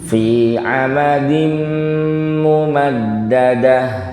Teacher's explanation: Ini ada tanwin ketemu mim namanya idgham bi gunnah. Yang penting ya didengungkan saja.